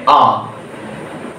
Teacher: এই স্বরধ্বনি যখন আমরা উচ্চারণ করছি তখন ওষ্ঠের কোনো বিকৃতি সেভাবে ঘটে না, সেজন্য আমরা একে নাম দেব নিরপেক্ষ স্বরধ্বনি।